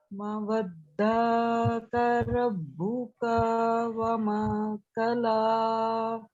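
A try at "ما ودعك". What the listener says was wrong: अच्छा सिस्टर आप देखिए, मीम के साथ अलिफ था, हमने इसको लंबा करना था. मा वद्दाका. वद्दाका. वद्दाका. फिर माँ आया, फिर उसको लंबा करना था. वमा क़ला. इस सूरत में पता है क्या है, हरूफे मद्दा आ रहे हैं, जिसको एक अलिफ के बराबर पढ़ना है.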